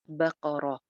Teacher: تا کے اوپر تنوین ہے، گول والی تا کے اوپر، یہاں پہ اگر ہم وقف کرتے ہیں تو یہ جو گول تا ہوتی ہے یہ سائلنٹ ہا میں چینج ہو جاتی ہے، تو اس کی وجہ سے یہاں پہ بقرہ ہو جائے گا اگر ہم نے وقف کیا.